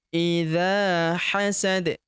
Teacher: huruf dza kita panjangkan dua harakat karena di depannya terdapat alif